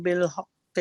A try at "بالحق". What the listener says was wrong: بس یہاں بالحق کی، ٹھیک ہے، کے کی بجائے بالحق کی، کے کی بجائے بالحق کی، ٹھیک ہے.